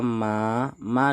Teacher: harus kita baca panjang dua harakat karena di sini terdapat Mad Thobi'i